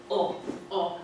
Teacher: it feels like it's made more in the throat. There's more space in the mouth, and the lips are slightly rounded.